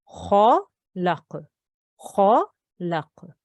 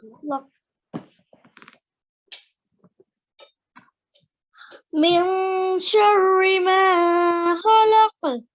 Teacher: So make your mouth into a round shape, a serious shape. All the other letters here that you've read before are thin. So this is a thick sound.